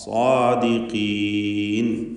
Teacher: സ്വാ എന്ന് ചുണ്ട് ചേർത്ത് പറയരുത്, പ്രത്യേകം ശ്രദ്ധിക്കുക.